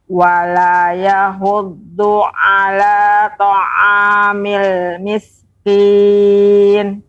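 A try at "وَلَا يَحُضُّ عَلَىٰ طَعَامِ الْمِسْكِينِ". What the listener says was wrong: Nah, ini juga ketika tadi wala yahuddu terdengar hanya besar. wala yahud. Yang benar yahud, yahuddu.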